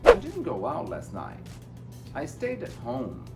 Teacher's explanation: Tá vendo que todas as palavras importantes, deixei ela um pouquinho mais comprida.